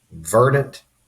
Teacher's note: In verdant, the first syllable is emphasized, so the apostrophe goes after the R.